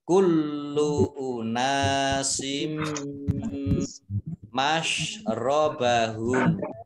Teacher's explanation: Sin kasroh tanwin bertemu dengan huruf mim, bacaan idgham di gunnah, masuk dengan mendengung. Mim ditandai dengan mimnya tasdid, dibaca gunnah atau mendengung, ditahan 2 harokat.